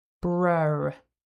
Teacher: Syllable two starts with the cluster br. Then there is a really weak schwa and another r sound. So, together that sounds like brer.